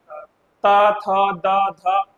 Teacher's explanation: दंत में क्या आता है, ता थ द ध। देखो ना, बोलते समय जीभ आपकी अंदर से दांत को टच करती है